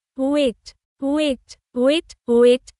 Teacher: Wait, wet, wait, wet, long, tense vowel. Long, a, spelled with, ai, the vowel glides upward.